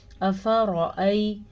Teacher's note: افرأی، حمزہ زبر آ، فا زبر فا، دونوں کو لمبا نہیں کرنا کیونکہ دونوں کے اوپر بڑی زبر ہے. را کو پر پڑھنا ہے کیونکہ را کے اوپر بھی زبر ہے. را پہ زبر یا پیش ہو تو را پر پڑھی جاتی ہے، را کے نیچے زیر ہو تو را باریک پڑھی جاتی ہے.